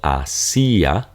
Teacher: stress over the high vowel this will be a Hiatus so you're going to break them up because the I will sound like a natural e